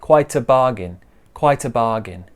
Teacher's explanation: the t joins that uh sound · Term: connected speech